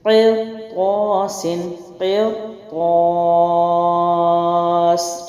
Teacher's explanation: قاف موٹا، را بھی موٹا پڑھا کیونکہ آگے طا ہے